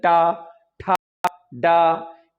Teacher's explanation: अब टा वर्ग में भी जीभ को तालु में चिपकाया जाता है, लेकिन मोड़ कर। जैसे आप टा कहेंगे तो आपको ऐसा कि टा, ठा, डा, ये जीभ तालु में ही जा रहा है, लेकिन जीभ को मोड़कर जीभ को कहां स्पर्श कराया जा रहा है स्थिति में, उस हिसाब से इनका वर्गीकरण किया है। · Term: मूर्धा में स्पर्श